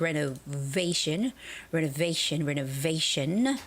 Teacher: the word renovation has the stress on the v a part